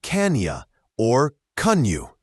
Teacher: Similar to other can you phrases, this often reduces to can ya or kun you. The N connects to the Y